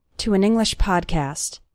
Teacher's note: You can see that the words to and English all flow together